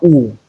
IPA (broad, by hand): ʊ